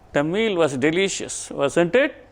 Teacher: Suppose if I am not sure whether the listener will agree with my statement, the meal was delicious or not. If I am not sure about it, I am going to use a rising intonation.